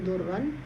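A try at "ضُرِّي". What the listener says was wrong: Pakai ya durri, ianya mutakalim. Iya, pakai mat ya.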